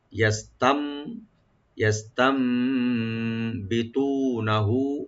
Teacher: আছে নুন সাকিন, নুন সাকিন পরে যেহেতু বাড়ছে এখানে একলাপ হবে, নুন সাকিনটা মিম সাথে চেঞ্জ হয়ে গুণ সহকারে পড়া হবে